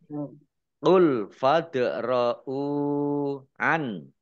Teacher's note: bacaan qolqalah dibaca memantul ditampakkan pantulannya